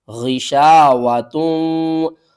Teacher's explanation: غین کو آپ نے حلق کے اوپر والے حصے سے ادا کرنا ہے. یہاں پر ہم نے اس ہا کو نہیں پڑھنا، تا کو پڑھنا ہے اور تا کو واو سے ملانا ہے.